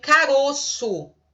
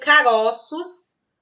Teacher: Ou seja, o timbre que era aberto no singular se torna fechado no plural, ou vice-versa. O timbre que era fechado no singular se torna aberto no plural. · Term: plurais metafônicos